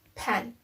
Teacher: its place of articulation is bilabial because when we try to say per our both lips is touching each other